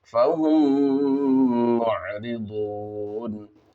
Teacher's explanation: یہاں پر ادغام شفوی ہوگا کیونکہ میم ساکن کے بعد میم ہے